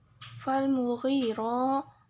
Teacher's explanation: ro ini hukum bacaannya tafkhim, yaitu dibaca secara tebal